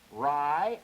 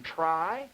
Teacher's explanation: This sound, the sound in rye, is a fully voiced sort of spirant. But the sound in try is a voiceless spirant with a tremendous amount of friction noise on it.